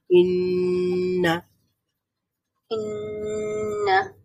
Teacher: আমরা একটু সাউন্ডটাকে একটু দীর্ঘ করব, তখনই গুন্না হয়ে যাবে।